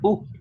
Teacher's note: good pay attention is short short it is true rounded and it is high back so the pronunciation is very short